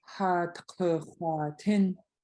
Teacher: This next phrase has a lot of low vowels, and then you're gonna go up for the last one.